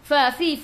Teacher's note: gigi atas menyentuh perut bibir bawah